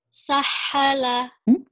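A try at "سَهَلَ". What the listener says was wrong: Bukan ke ha. Nafasnya satu saja. Enggak boleh ya. Banyak nafas. Banyak nafas menjadi ha. Sahala. Nafasnya satu. Sahala.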